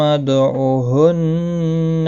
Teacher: دال ساکن پر قلقلہ ہوگا